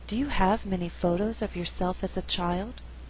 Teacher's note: In this example, I did not stress the word many. Many is a content word, but because we had too many stressed syllables together, there's a better flow if many is not stressed.